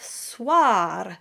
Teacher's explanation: the oi combination is voiced as a w followed by an a sound just like um and of course we always flip the r at the end.